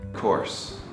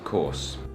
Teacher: Americans pronounce the R very clearly, and we use the back of our tongue to make that sound. But the British people basically just make the vowel sound longer, and they don't really pronounce the R at all.